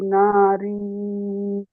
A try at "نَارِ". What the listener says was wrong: না, রজের রি, নারি, রি টান হয়ে যাচ্ছে বেশি। ফি নারি জাহান্নামা।